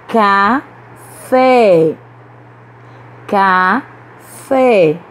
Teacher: A sílaba forte é a última, então essa palavra é oxítona.